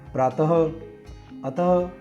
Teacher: जहाँ विसर्ग का चिन्ह होता है उस शब्द के अंत में ह वर्ण की ध्वनि का उच्चारण होता है